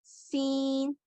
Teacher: सीन की अदायगी के लिए दोनों दांतों को अगर आपस में मिलाएं तो सीटी की आवाज आती है